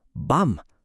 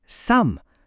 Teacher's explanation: Pansinin niyo pag sinabi niyo 'yung tunog, natural na nagsasara yung mga labi ninyo sa dulo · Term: M sound